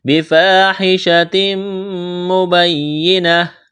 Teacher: بفاحشۃ، الف مدہ ہے، الف کے برابر کھینچنا ہے، تنوین کے بعد میم ہے، یہاں پر ادغام کریں گے، غنہ کریں گے، آواز ناک میں چھپائیں گے